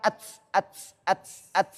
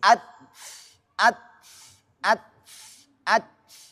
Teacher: Ujung lidah bertemu ah pangkal gigi seri atas.